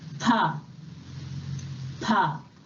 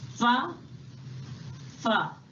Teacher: In Hindi, we pronounce pa sound with both the lips, pa, pa. Whereas in English, it is pronounced with the lower lip, almost touches the upper teeth. Fa, fa. In the Say Aloud section of Unit 8 and 9, a list of words beginning with fa sound is given for practice.